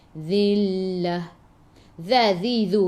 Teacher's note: hujung lidah keluar pada gigi depan